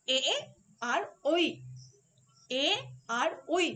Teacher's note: দেখো কণ্ঠ থেকে শব্দটা বেরোচ্ছে এবং সেই শব্দটা তালুতে গিয়ে ভেঙে এ এবং ওইতে পরিণত হচ্ছে। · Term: কণ্ঠতালব্য ধ্বনি